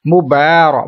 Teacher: با کے اوپر کھڑا زبر لمبا کریں گے